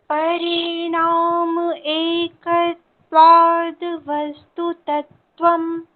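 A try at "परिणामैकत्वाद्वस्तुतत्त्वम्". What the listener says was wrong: हाँ, परिणाम एक नहीं बोलना है, परिणामैकत्वात्। मई है ना, एक एक क्यों बोलते हैं आप? परिणामैकत्वाद वस्तु तत्वम।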